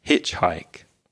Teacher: want to make that sound from your throat so it's not it's more H like you're cleaning your glasses